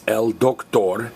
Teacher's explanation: notice we're stressing the last vowel because it's a lizard word